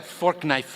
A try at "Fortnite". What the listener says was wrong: Did you say fork knife? It's actually pronounced Fortnite. No, but believe me, definitely, I know. It's Fortnite, right, guys? It's Fortnite.